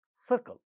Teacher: Second syllable not stressed because the first one is stressed. Ka in the syllable initial position, no aspiration. Therefore, we are saying when the stress is on the first syllable, second syllable is unstressed and unaspirated.